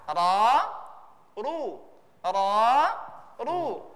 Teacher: Kapan dibaca tebal? Kalau huruf ra itu berbaris fathah atau berbaris dhamma.